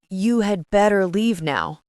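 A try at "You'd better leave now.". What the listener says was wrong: But in natural speech, we contract had to d. Yes, it sounds smoother. It can sound like a warning, so be careful with your tone.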